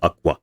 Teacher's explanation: for example here first you make an unvoiced labial velar and when you release the tension you use your lips so this is why it's labialized you use your lips to produce another consonant as part of the same airflow